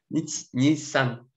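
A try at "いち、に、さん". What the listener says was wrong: Да, сан, н на конце, сан.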